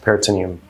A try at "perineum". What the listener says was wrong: It's perineum. You're You're saying it right. Perineum. You're just adding a T.